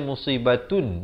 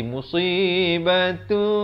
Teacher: di sini kena baca dengan bunyi tanwin ditukarkan kepada bunyi mim. Bunyi nun kepada bunyi mim. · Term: ikhlab